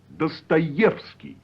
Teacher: In Dostoevsky, for example, the stress falls on the third syllable, the yev.